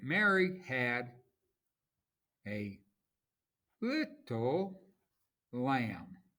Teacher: Unstressed, stressed, unstressed, stressed, unstressed, stressed. So we have 3 feet. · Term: iambic trimeter